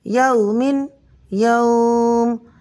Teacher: اس واو لین کو ہم 2 الف کے برابر کھینچ کر پڑھیں گے